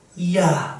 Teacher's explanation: 이를 발음을 하는 것까지는 아니지만 발음을 하려고 준비를 잔뜩 해놓은 상황에서 이야 미끄러지듯이 얘를 발음하는 것이라고 얘기했죠. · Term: 반모음